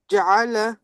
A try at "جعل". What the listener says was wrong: जा ज्यादा लंबा हो रहा है, छोटा रखें इसको, जायला।